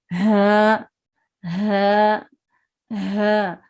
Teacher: हा जबर अलिफ हा, इसको सीने से पढ़ेंगे, इसे हा नहीं पढ़ना, ठीक है। इस साउंड में वाइब्रेशन होती है, वाइब्रेट करता है आपके सीने की तरफ, जो हलक का हिस्सा नीचे का, वहां से ही हर्फ अदा होता है।